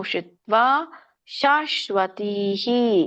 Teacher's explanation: ಮಧ್ಯದಲ್ಲಿ ಬರ್ತಿರೋದರಿಂದ ನೀವು ಸ್ವಲ್ಪವಾಗಿ ಹ ಹೇಳಬೇಕು